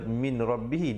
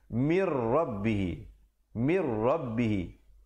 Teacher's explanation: Asalnya min rabbihi, tetapi jangan pula kita baca min rabbihi, di situ jadi idgham bila gunnah, masuk tanpa dengung